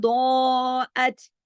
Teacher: ضاد موٹا پڑھا جائے گا، کھینچ کے پڑھا جائے گا، اوپر مد ہے. ضاعت، باقی آگے جتنے حروف ہیں باریک ہیں ان کو باریک پڑھنا ہے.